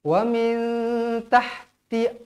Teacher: huruf nun kosong bertemu dengan huruf ta hukumnya ikhfa Hakiki wajib dibaca dengan dua harakat